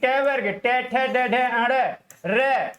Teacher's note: इनका उच्चारण स्थान क्या होता है साथियों? मूर्धा होता है।